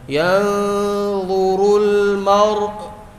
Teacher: حمزہ کی آواز جھٹکے سے بند کریں گے اور را کی بھی آواز جاری رہے گی